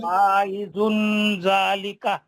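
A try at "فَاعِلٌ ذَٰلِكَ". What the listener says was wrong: कहाँ है यार फाइजुन? फाइजुन कहाँ है? फाइलुन, लाम पे दो पेश, लाम पे तनवीन है, उसके बाद जाल है। तनवीन का इख्फा हर्फ जाल। जाल।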